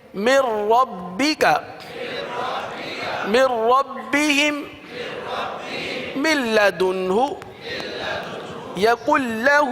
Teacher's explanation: نون ساکن و تنوین کے بعد را اور لام اگر یہ حروف آ جائیں تو ادغام بلا گنہ ہوتا ہے یعنی گنہ نہیں کریں گے